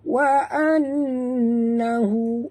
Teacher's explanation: nun bertasydid, wajib dengung, wajib al-gunah